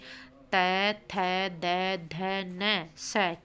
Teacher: जीभ का ऊपर के दांतों से लगकर उच्चारण करना, जैसे तै, थै, दै, धै, नै, सै के उच्चारण।